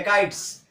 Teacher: काइट्स, मतलब दंत सौ का उच्चारण कर रहे हैं। सौ को हम कौन सा उच्चारित कर रहे हैं, दांत पर लगाकर जीभ को, तब हम उच्चारित कर रहे हैं शौ को।